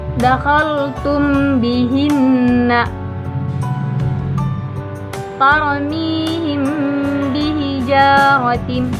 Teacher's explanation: Maka cara membacanya itu dengan menyamarkan mim sambil didengungkan. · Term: ikhfa syafawi